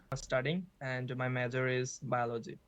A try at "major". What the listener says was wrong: Major, so a bit of a problem with the j very often. We've had a few Bangladeshi candidates on this channel, and I noticed the j sound seems to be a problem. J and the j seem to be a problem.